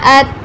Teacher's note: حمزہ زبر تا ات، اس پر قلقلہ نہیں کرنا، تا پر قلقلہ نہیں کریں گے، سمپل پڑھیں گے